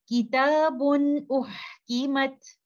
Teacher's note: that nun sakina can not come without the nasal sound gunna is there but i'm not holding it for a very long time